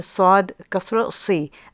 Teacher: we make the sword heavy by tensing up the tongue and raising it at the back